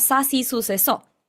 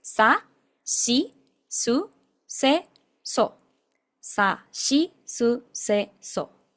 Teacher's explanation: Tenemos la sílaba Si. Pero ellos no tienen la sílaba Si, sino que tienen la sílaba Shi, Shi. Entonces, esto se pronuncia Sa, Shi, Su, Se, So.